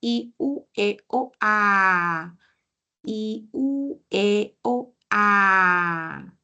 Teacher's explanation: Y cuando pronuncio la A, uy, por completo baja